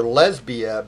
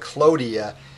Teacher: calls her lesbia because lesbia like clodia is three Syms long starting with an accented long syllable